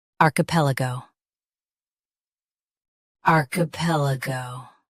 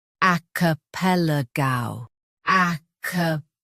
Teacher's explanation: US has R. UK has ah.